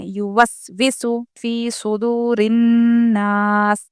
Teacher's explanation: نون پر تشدید ہو تو غنہ ہوگا، اس لیے ہم یہاں پر غنہ کے ساتھ پڑھیں گے اور آخر جزم والے حرف جزم دے کر یہاں پر سانس توڑیں گے ہم.